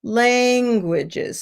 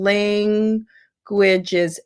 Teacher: you lengthen the syllable of the first syllable, languages, and then you shorten the second two syllables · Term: syllable stress